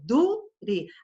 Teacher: Da palavra dure, eu falo dure, a sílaba forte é du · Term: sílaba tônica